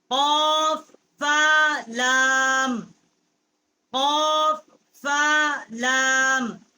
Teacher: قاف جو ہے بڑی کاف ہے، قوے کے متصل جب زبان کی جڑ اوپر کے تالو سے ٹکر کھاتی ہے تو اسے قاف ادا ہوتا ہے. اور لام جو ہے یہ ہونٹوں کی جو خشکی ہے وہاں سے اس کا مخرج ہے، وہاں سے ادا ہوتی ہے.